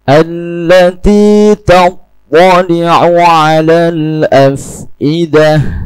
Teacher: To tidak mempunyai sifat hamas sehingga tidak perlu menampakkan desis pada huruf to. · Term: sifat itbaq